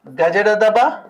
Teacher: నాదంతులు కంపించినప్పుడు నాదంతులు వీలైనంత దగ్గరగా వచ్చి కంపించినప్పుడు జరిగేటువంటి ప్రయత్నాన్ని నాదత అంటాము